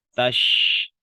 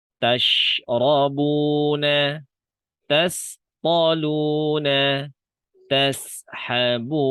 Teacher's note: Tash yang bermain tengah lidahnya saja. Tash ya. Bibir saya nggak bergerak maju kan. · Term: huruf shin